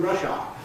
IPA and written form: ˋrʌʃɑː (rush hour)